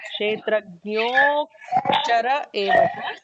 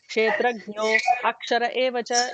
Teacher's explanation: There is an elongated no